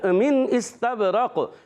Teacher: نون ساکن حمزہ آ گیا ہے، یہاں پر اظہار حلقی کا قاعدہ ہوگا. نون کو ظاہر کریں گے، غنہ نہیں کریں گے. اس سین کو ظاہر کریں گے سیٹی کے ساتھ، اس سیٹی نکالیں گے.